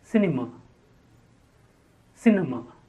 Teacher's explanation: cinema the stress on the first syllable